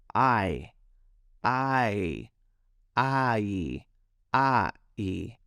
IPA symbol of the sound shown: aɪ